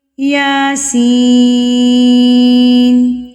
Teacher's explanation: یا ایک حرکت کے برابر، یعنی کہ ایک الف کے برابر، ایک حرف کے برابر، اور سین جو ہے وہ 4 حرکات کے برابر، اتنا فرق ہے دونوں میں۔